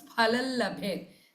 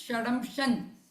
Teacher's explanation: The Anuswara here Phalam becomes Phalal Labhet. Then Shadamsham becomes Shadamshan.